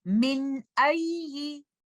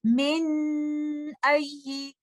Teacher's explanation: आप इसमें गुन्ना को बहुत देर तक होल्ड करके नहीं रखेंगे · ये तो मैंने गुन्ना को बहुत ज्यादा देर खींच दिया, तो इजहार की कंडीशन में आप इस तरह से नहीं करेंगे। आप लेटर नून को क्लियरली इजहार के साथ अदा करते हुए नेक्स्ट लेटर पर मूव कर जाएंगे